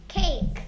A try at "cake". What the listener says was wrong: 자꾸 스케이크래. 자꾸 스케이크래.